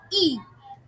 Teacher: vokal I diucapkan dengan meninggikan lidah depan atau ujung lidah sehingga mungkin sehingga terciptalah bunyi I vokal u diucapkan dengan menaikkan